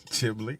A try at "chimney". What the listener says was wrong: How do you put an L in chimney?